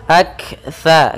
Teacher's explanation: kaf sukun itu punya sifat hamas, yaitu mengalirnya udara atau mengalirnya nafas kita. Sedikit saja. Aktsa. Kemudian di sini jangan sampai kita membaca sin, tapi di sini sa.